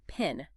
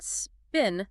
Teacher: When you say a word like pin, there's this puff of air that comes out. We call that aspiration. But when you say the word spin, there's no puff of air. There's no aspiration.